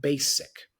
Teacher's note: the pronunciation of the word is basic with an S sound not z sound